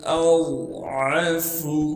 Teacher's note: غاد کو موٹا کر کے پڑھیں گے کیونکہ غاد موٹے حروف میں سے ہے